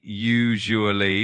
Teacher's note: the second syllable has a soft je sound